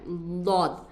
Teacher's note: बस बाया किनारा बाए जानिब के ऊपर के दाढ को लगाना है उससे दद निकलता है